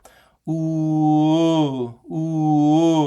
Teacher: So I'll have to move from ooh to uh notice how ooh is high in the back